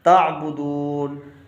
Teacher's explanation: جب تا کو عین سے ملائیں گے تو جھٹکے سے پڑھیں گے